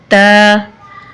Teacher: त जुबान की नोक और सनाया उलिया की जड़ से अदा होता है